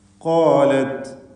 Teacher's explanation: ഖാഫും അതിൻ്റെ ദീർഘാക്ഷരമായ അലിഫും തഫ്ഖീം ചെയ്യണം,